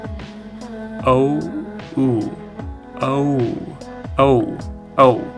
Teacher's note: This is another glide vowel. First say O, and then glide into U. O, U, O. Oftentimes I hear it just sounding like ow.